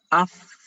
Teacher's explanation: Ya, jadi dengan apa? Menyentuhkan ujung gigi seri bagian atas, ya, bersentuhan dengan apa? Bibir bawah bagian dalam. Jadi bibir bagian dalamnya ya, bukan bagian luar. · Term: makhraj fa